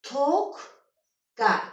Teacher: Birinci q cingiltili samit öz kar qarşılığına çevrildi.